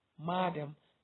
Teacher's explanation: The stress in the word M-A-D-A-M is madam, so the stress is on the first syllable